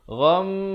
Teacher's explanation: dengung betul-betul 2 harakat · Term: wajibul gunnah